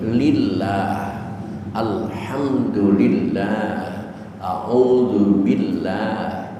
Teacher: Tapi ketika lam jalalah diawali dengan didahului dengan harakat kasrah, harkat di bawah. Maka lam itu harus dibaca tipis seperti lillah, alhamdulillah, auzubillah.